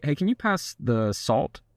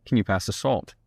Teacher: drop the tone just a little bit at the bottom to make it sound a lot more firm and a lot more confident